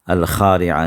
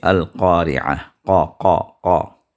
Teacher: خا کا جو ساؤنڈ جہاں سے نکلتا ہے اس سے تھوڑا سا اوپر آپ جو ہے قاف کے ساؤنڈ کو پائیں گے، تو وہاں سے آپ اس کو ادا کریں۔